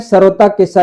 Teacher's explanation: याद रखिएगा ये सरोता का सा दंत्य सा है।